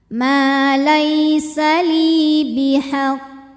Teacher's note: Qalqalah yaitu Q yang sukunnya ini karena waqaf atau disukunkan ya maka dibaca qof memantul dengan pantulan yang besar Nah karena qfnya ini ada tasdidnya ini sebagian menamakannya Qalqalah Akbar · membedakan dengan yang tidak ada tasdidnya cara bacanya juga agak berbeda kalau qofnya ada tasdid baca pantulannya tuh agak tertahan dulu untuk menyempurnakan tasdidnya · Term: Qalqalah Kubro